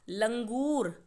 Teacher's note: लंगूर में ल के बाद अंग की आवाज आ रही है इसीलिए ल पर बिंदी लगाकर हम लिखेंगे लंगूर आगे शब्द है